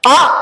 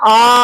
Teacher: ஒரு ஓசைன்னா சின்ன சத்தம் குறில் ரெண்டு ஓசைன்னா பெரிய சத்தம் நெடில்